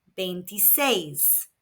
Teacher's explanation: there is an accent on the last E, so the emphasis is where the accent is on the last syllable.